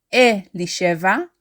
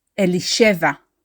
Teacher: is not Eli cheva it is not elisheva it is elisheva we stress the she syllable